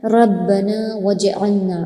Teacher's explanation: ربنا میں نون الف زبر نا کو کھینچیں گے، وجعلنا میں بھی نون الف زبر نا کو کھینچیں گے، جیم میں قلقلہ کریں گے۔